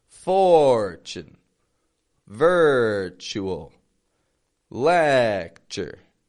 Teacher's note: The strong part of the word is the first syllable, the beginning.